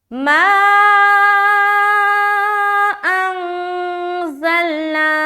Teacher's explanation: 3 سے 4 الف کھینچیں گے اور کھینچتے ہوئے ملائیں گے۔ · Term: مد منفصل